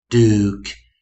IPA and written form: duk (duke)